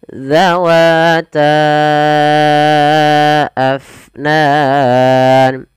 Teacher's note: Kemudian pada lafal fa alirkan nafasnya, jangan abnan tapi afnan.